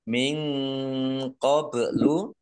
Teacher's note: nun sukun bertemu dengan huruf q bacaan Ikhfa dibaca samarsamar